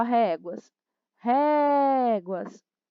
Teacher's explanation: as réguas ré é mais forte penúltima sílaba paroxítona